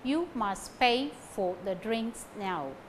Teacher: Pay, drinks, now carry stress.